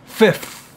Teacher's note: So it's like, so if you remember before we were doing free and three, and now it's almost like we have free three, one after the other, fifth. So when I'm doing the F, remember, teeth touching the bottom lip, and then immediately after, tongue goes out